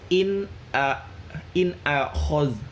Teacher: Dibaca jelas, izhar halqi, jelas di tenggorokan.